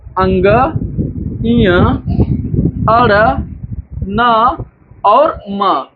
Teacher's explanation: जो हमारे ये पंचमाक्षर है इनका उच्चारण स्थान नासिका है